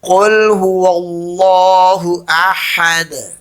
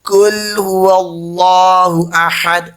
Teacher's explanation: Qaf is bold, full mouth.